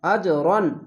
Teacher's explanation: কলকলা ধাক্কা মেরে নিচে সাউন্ড আসবে